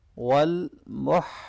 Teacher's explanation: यहाँ हा को अच्छी तरह से गले के दरमियान से अदा करना है।